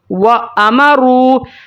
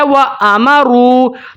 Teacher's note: میم کو میں نے جلدی سے ادا کیا ہے، میم کے اوپر میں نے ہولڈ نہیں کیا، میم کی آواز کو میں نے ناک کے اندر روک کے نہیں رکھا، میں نے اس کو ایسے پڑھا ہے وَأَمَرُوا، اس کو میں نے ایسے نہیں پڑھا وَأَمَرُوا، نہیں، میں نے پڑھا ہے وَأَمَرُوا۔ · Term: غنہ آنی